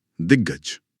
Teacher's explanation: यहां आधा क भारी आवाज ग से टकरा रहा है। तो कमजोर क हार मानकर अपने परिवार के तीसरे सदस्य ग में बदल जाएगा